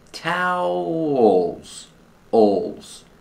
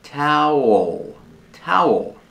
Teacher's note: Towels, owls. The second syllable has a dark L, ol, with the tongue near the back of the mouth, ol, like call and wall.